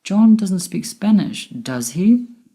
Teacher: My voice went up at the end with does he? Because I'm not sure whether he speaks Spanish or not.